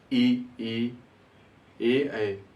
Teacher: जिन वर्णों को उच्चारण में जीभ का अगला हिस्सा जीभ आगे की तरफ बढ़ती है उसे हम कहते हैं अग्रस्वर। जैसे आपका है ई, ए।